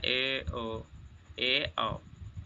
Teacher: Half close मतलब जिनमें मुख द्वार आधा बंद रहता। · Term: अर्धसंवृत